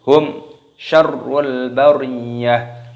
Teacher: mim sukun bertemu dengan huruf shin, hukumnya dibaca idhar safawi. Jadi dibaca jelas, jangan didengungkan hum syarrul, tidak boleh, harus hum syarrul bariyah.